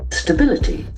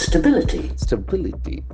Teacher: The accent falls from the second syllable.